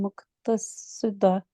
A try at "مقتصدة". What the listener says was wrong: اس کو ذرا ہا کو کلیئر کر لو۔ ہاں